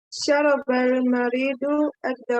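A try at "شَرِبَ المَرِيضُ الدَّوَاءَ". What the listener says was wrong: Saroba apa atau syariba?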